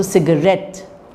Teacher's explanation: in the word for example cigarette which is three syllables the third syllable is more prominent than the first syllables · the ret is the most prominent, but the sig has slight prominence